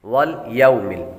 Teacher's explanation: یہاں پر لام باریک ہے اور یا کے بعد واو حروف لین میں سے ہے